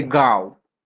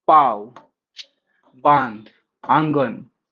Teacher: इसका प्रयोग संस्कृत में नहीं है। चंद्र बिंदु के उच्चारण के समय हवा मुंह और नाक दोनों से निकलती है।